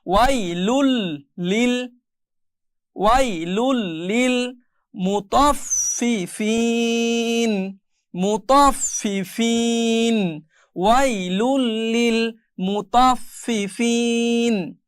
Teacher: এরপরে যেই শব্দটি এখানে ব্যবহার করা হয়েছে ওয়া ইয়া জবর ওয়াই, এটা লিন, ওয়াই লাম দুই পেশ লুন ছিল কিন্তু এরপরে লাম আসার কারণে এটা লুল হয়ে গিয়েছে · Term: ঈদগামে বেলাগুন্না